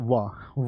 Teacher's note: दंत और ओष्ठ दोनों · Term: दंतोष्